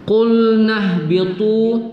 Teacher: ta berbaris dhammah diikuti waw sukun, itu dibaca satu alif dua harakat pada mad tabi'i, mad asli.